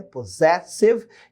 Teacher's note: Primeiro ponto, esses dois S's aqui são a sílaba tônica, né? Possessive, e eles têm som de Z